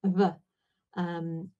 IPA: β